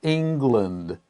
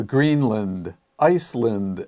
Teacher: at the end of a term in geography is not pronounced land unless it is separate if it's one word then we have the sound lind and the best example of course is england we don't say · If it's one word, then we have the sound lund.